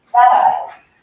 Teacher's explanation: when you don't pronounce the T, but your tongue hits the roof of your mouth, that is called a tap T